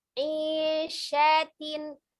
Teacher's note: Tengah lidah bertemu dengan langit-langit tengah. Tengah lidah bertemu dengan langit-langit tengah. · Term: huruf shin